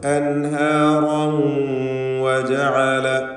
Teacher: അൻഹാറൻ വജഅല എന്ന് ഇദ്ഗാം ബിഗുന്ന നാഖിസ് നൽകി വാവിലേക്ക് തൻവീനിനെ ലയിപ്പിച്ച് മണിച്ചുകൊണ്ട് ഉച്ചരിക്കുക